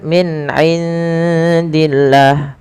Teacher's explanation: jelaskan huruf nunnya karena dia ada bacaan izhar